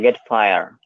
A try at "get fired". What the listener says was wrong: Fired. I'm not hearing your D.